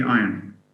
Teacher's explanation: Iron would be I, schwa, N. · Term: triphthong